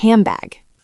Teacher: The N sound changes to an M because your lips are getting ready for the B. It becomes hambag. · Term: assimilation